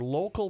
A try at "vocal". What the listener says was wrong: That's vocal powers, not local. said local, yes.